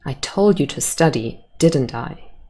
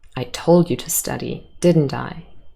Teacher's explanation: i'm making a statement because you know i told you and i know i told you and i show you that i'm sure of that by using a falling intonation